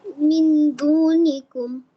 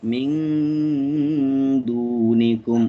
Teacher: গুণাটা একটু লং করবা তাইলে ভালো হবে।